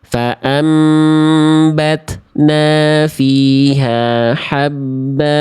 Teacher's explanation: Berwakaf pada huruf yang berharakat fatatain dia dibaca jadi dua harakat namanya mad iwad.